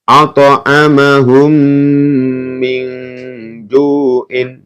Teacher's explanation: ada mim sukun bertemu dengan mim maka dibaca mendengung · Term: Idam Mimi